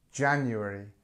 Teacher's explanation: Number one, January. Okay, and here we have ja, so it's strength at the beginning, January. This is long, this is where the stress is